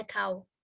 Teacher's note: from a low to a high back position for ow